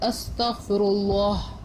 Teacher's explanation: تو ہم نے رو کے اوپر پیش تھا، لام کو موٹا کیا